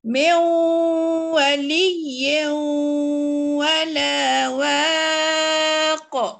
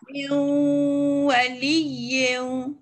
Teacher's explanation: nun mati bertemu dengan waw, dan tanwin pula bertemu dengan waw, kena juga dua-dua tempat tu kena dengung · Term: idgham naqis